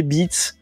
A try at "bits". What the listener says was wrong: Alors, prononce bien le S à la fin de bits.